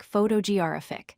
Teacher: The third syllable gets the emphasis. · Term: third syllable stress pattern